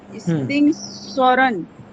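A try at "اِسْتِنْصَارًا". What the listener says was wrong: সতে টান হবে।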